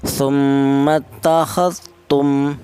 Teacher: Di sini ada tum yaitu ada mim yang bertasdid. Di mana mim yang bertasdid ini dibaca ghunah.